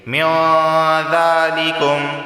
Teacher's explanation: بخیر من ذالکم، نون ساکن کے بعد دال آیا ہے اور دال حروف اخفا میں سے ہے، اخفا والا غنہ ہوگا، یعنی زبان کی نوک اوپر کے تالو سے نہیں لگے گی۔